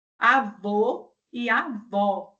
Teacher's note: Os nossos lábios ficam mais arredondados na hora que produzimos esses sons, que produzimos essas vogais. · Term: arredondadas